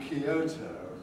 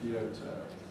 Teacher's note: And you're going to go and visit Kyoto. We don't feel happy with a y just before a strong stressed O. So we add an extra syllable, make it Kyoto.